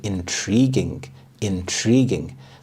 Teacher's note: The stress is on the second syllable, intriguing